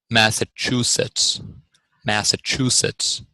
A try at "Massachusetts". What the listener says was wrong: Yeah, back off the CH just a little bit, Massachusetts. We don't tend to round our lips as much when we say CH. So we say ch.